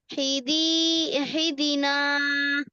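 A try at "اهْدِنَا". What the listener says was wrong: ইহি কেন বলছো? হায় তো জের নেই। হামজা হাজের ই। ইহ দিনা। ইহ দিনা।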